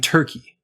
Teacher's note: basically just the same tongue position as the consonant r as in rat, just without rounded lips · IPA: [ɝ]